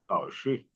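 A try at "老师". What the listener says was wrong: ठीक हो गया जी।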